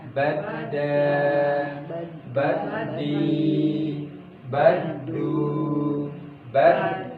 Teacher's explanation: Naik ke atas, kemudian pada ujung lidahnya dia menyentuh pada pangkal gigi seri depan bagian atas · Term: Dal